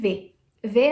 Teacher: o lábio inferior nos dentes superiores